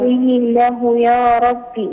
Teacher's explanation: وقيله يا ربي صلة صغرى وقيله يا ربي وقيله مد الهاء بمقدار حركتين